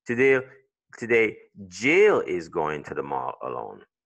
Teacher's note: si je mets l'accent sur Jill, en tant que natif anglophone, je suis en train de communiquer autre chose